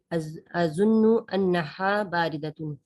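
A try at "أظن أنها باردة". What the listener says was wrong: انہا نہیں ہاں. ہا اور ہا میں فرق ہے. ہا ہلکی اور ہا یہ ہا ہے سینے والا اور یہ ہے حلق والا. فرق ہے.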